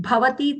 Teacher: Here both the bhas are mahaprana. In bhavati, the bha mahaprana and short.